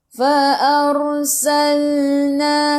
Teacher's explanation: Ra, sebelum ra ada baris atas, kena baca ra tu tebal, lidah naik ke atas.